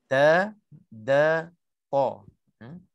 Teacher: Bukan hujungnya ke dalam, hujungnya nak keluar. Jadi hujung lidah di sini menekan ke pangkal gigi atas.